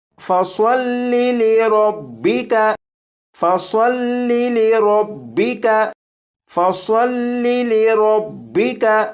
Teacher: صاد کو سیٹی کی آواز کے ساتھ بھی پڑھیں گے، اور صاد کو پر یعنی موٹا بھی پڑھیں گے، اور صاد کو پر یعنی موٹا پڑھنے کے لیے آواز کو موٹا کریں گے تو یہ حرف خود بخود پر یعنی موٹا پڑھا جائے گا۔